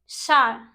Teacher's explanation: और ये हमारा होता है तालव्य। सा जो हमारी जीभ होती है वह ऊपर जाके फोल्ड होके जो हमारा तालु होता है उसको टच करती है। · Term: तालब